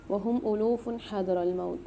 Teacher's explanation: وهم ألوف حذر الموت، ألوف میں جو فا کے اوپر دو پیش آ رہے ہیں، یہاں قاعدہ ہو رہا ہے اظہار حلقی کا، یہاں اظہار کر کے پڑھیں گے، غنہ نہیں کریں گے